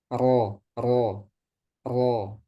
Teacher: kalau ro dia mengerucut ke tengah. Ro ro ro. Karena ada takrir kan. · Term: inhiraf